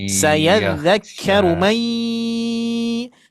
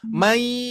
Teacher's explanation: Memasuki ke hurufnya langsung mai. Itu idgham bi gunnah disertai dengungan. Maka ditahan ya.